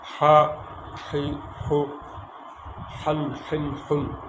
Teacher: হলকের মধ্যখান হতে দুটো হরফ উচ্চারিত হয়, আইন হা, আন আইন উন, আই আই উই, আউ আউ উ, আ আ আ, আ আন আইন উন।